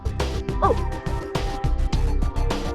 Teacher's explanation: The characteristic of O is the part of the tongue just behind the center is raised, just above the half-fold position.